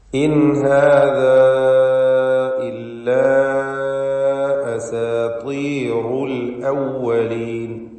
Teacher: ഇവ രണ്ടും മദ് മുൻഫസിൽ ജായിസ് നൽകി 4 or 5 ഹറക്കത്തിന്റെ അളവിൽ ദീർഘിപ്പിക്കേണ്ടതാണ് · ഇൻ ഹാദാ ഇതിൽ സാക്കിനത്തായ നൂനിനെ ഇൽഹാർ ഹൽഖി നൽകി മണിക്കാതെ വെളിവാക്കുക